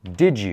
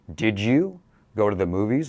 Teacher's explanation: That did you becomes J. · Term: J sound